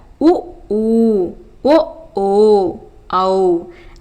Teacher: வாய் திறக்கும் முயற்சியுடன் இதழ்களை குவிப்பதால் பிறக்கும் உயிரெழுத்துக்கள்